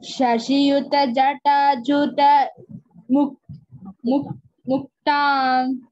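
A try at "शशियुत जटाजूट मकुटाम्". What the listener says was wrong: Aha, Makutam. It is not Juta. Ju is Dirgha. Juta Makutam. Makutam is not there. Makutam.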